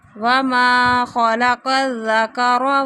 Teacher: نون ساکن کے بعد سا آ رہا ہے تو یہاں پہ اخفا ہو رہا ہے